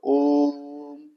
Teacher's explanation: ओ को हम तीन गुना अधिक खींचेंगे। तीन गुना अधिक मतलब ओम इस तरह से। · इस स्वर को हम इतना खींचे कि ह्रस्व से तीन गुना समय लगे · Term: प्लुत